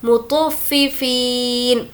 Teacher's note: तो को पुर पढ़ेंगे और फा से मिलाएंगे। मुतफ़्फ़िफ़ीन, फ़ी को खींचेंगे क्योंकि यहाँ पर या मद्दा है। · फ़ी को खींचेंगे क्योंकि यहाँ पर या मद्दा है। या मद्दा मतलब या जिस पर जज़म हो और उससे पहले ज़ेर हो।